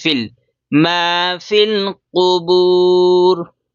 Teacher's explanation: فا کو ڈائریکٹ لام میں ملائیں گے، یہ یا سائلنٹ ہے اور الف بھی سائلنٹ ہے